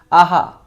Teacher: जब हम आहा बोलते हैं तो हमारे मुख से बहुत ज़्यादा हवा बाहर निकलती है, ज़्यादा प्राण की आवश्यकता होती है, आहा, है नहीं? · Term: महाप्राण, विसर्ग